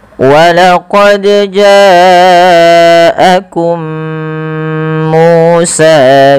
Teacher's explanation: Baik teman-teman, kita perhatikan pada lafal huruf dal yang berharakat sukun pada lafal bacaan walaqad. Di sini huruf dalnya harus kita pantulkan bunyinya. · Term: qalqalah